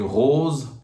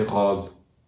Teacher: some region pronounce the closed o as open o